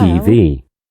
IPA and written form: ˌtiː ˈviː (TV)